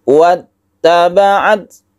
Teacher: Ketika kita itu menekan huruf ta, kita berhembus nafas sedikit, wattaba'at, sehingga membentuk itu huruf S.